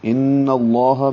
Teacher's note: ان میں غنہ ہے، آواز ناک کے بانسے میں لے جائیں گے